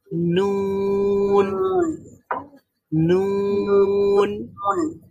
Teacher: নুনের মাখরাজ হচ্ছে জিহ্বার আগা সামনের সামনের চারটা দাঁতের মাড়ির সাথে লেগে নুন উচ্চারিত হবে